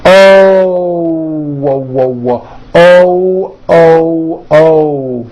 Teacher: When an American speaker makes an O, we end the vowel with a small W sound. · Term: hidden W